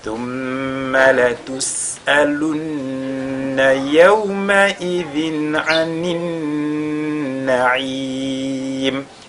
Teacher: on a un nun qui est mushaddada une fois de plus sur lequel on fait al-ghunna